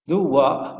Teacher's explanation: Vean cómo al final hace esa breve glotalización. No hay un vacío, o sea, no hay un silencio.